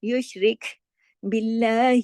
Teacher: شین کو جماؤ کے ساتھ، را کو باریک، را کے نیچے زیر ہے